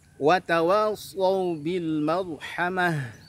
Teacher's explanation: Ra-nya tebal karena sukun didahului oleh huruf yang dibaca fathah.